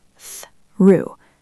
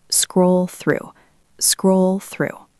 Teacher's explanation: The word through can be tricky. It has that th sound at the start. Tongue between your teeth. Threw. Try to make it one smooth sound.